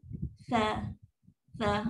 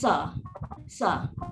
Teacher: ujung lidah kena keluarkan sikit. Kat gigi kapak ni keluar sikit je.